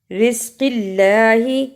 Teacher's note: اللہ کو نرم زبان سے پڑھا